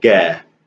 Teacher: Another way to say qaf, which is kind of my favorite, is ga. So here it actually sounds like a G.